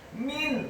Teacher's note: huruf mimnya dibaca tipis, kasrah 1 harokat, nun yang sukun bertemu dengan huruf ain, min azabin, hukum bacaannya adalah izhar halqi, dibaca dengan jelas, tidak boleh digunakan huruf nun yang sukunnya.